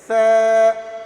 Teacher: इस सा निकालते समय जुबान को थोड़े दोनों दांतों के दरमियान लेकर आते हैं, जैसे सा, ठीक है।